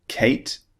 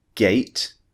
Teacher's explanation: The unvoiced sound is K, and the voiced one is G. So K, as in Kate, is unvoiced. G, as in gate, is voiced.